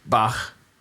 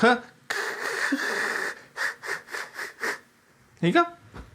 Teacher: The only difference is that instead of stopping the air completely and then letting it out in a little burst, you constrict the space between the tongue and the soft palate and make a friction noise instead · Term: velar fricative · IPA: [x]